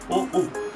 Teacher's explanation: কণ্ঠ এবং ওষ্ঠ থেকে উচ্চারিত হচ্ছে ও উ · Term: কণ্ঠ ওষ্ঠস্বর